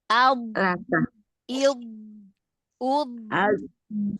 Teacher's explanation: Ya bukan syiddah bukan tertahan suaranya tetapi mengalir jadi ada aliran suaranya jadi bukan syiddah dia bukan bukan harus didorong bukan ad Lal